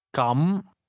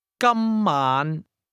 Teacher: the word for in that case is pronounced with a mid-rising tone, while the word for today has a high level tone.